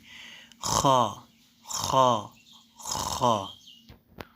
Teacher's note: 7 নম্বর হরফ খ। খ মোটা হবে এবং 1 সেকেন্ড টেনে পড়তে হবে।